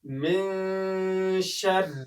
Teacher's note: وګورئ دلته په من شر کې نون راغلی دی او د هغې څخه وروسته شین راغلی دی چې دلته باید اخفا وشي، غونه کېږي او د پوزې له پاسنۍ برخې څخه اواز راایستل کېږي